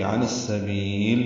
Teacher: عین وسط حلق سے ادا کریں گے، نصف میں ادغام شمسی ہو رہا ہے، الف لام نہیں پڑھا جا رہا، اور با کو لمبا کر رہے ہیں، لام ساکن پہ اظہار ہے، عن السبیل۔